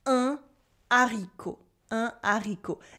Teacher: This is a rare instance where the H is silent but creates a cut. So there is no liaison. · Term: H aspiré